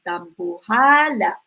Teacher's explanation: the stress is on your second to the last syllable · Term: malumay